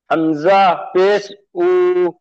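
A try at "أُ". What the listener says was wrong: উ টান হবে না ওটি। জি, ওটি টান হবে না, হামজা পেশ উ।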